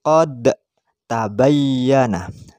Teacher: Seperti qad tabayyana, antara dal dan ta. Qad tabayyana itu idgham mutajanisain, makhrajnya sama tapi sifatnya beda.